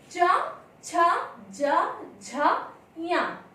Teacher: इन वर्णों का उच्चारण स्थान करते समय हमारी जिह्वा तालु का स्पर्श करती है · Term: च वर्ग